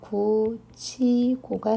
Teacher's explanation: 자, 이제 티읕이 물론 동시에 일어나는 거지만 티읕이 형식 형태소 이와 만나서 치읕이 됩니다